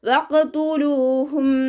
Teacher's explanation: ലാമിൻ്റെ കൂടെ വാവുമദ് വന്നു, 2 കൗണ്ട് നീട്ടിക്കൊടുക്കുക